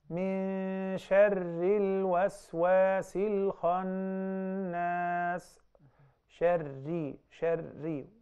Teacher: once the Ra has Kasra, automatically the Ra will be thinned